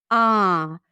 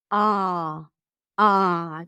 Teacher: so the lips are not rounded. You drop your jaw, pull the lips back a bit. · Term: A as in father